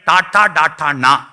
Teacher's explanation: അണ്ണാക്കിന്റെ മൂർധാവിൽ നാവ് കുത്തി വ്യഞ്ജിപ്പിക്കുന്ന മൂർധന്യം